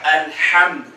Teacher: वसतुल हलक, गले के दरमियान से, गले के दरमियान से, आइन और हा